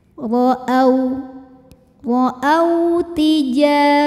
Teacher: ada wau sukun yang sebelumnya berharakat fathah cara membacanya cukup kita lunakan atau kita lembutkan saja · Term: huruf Lin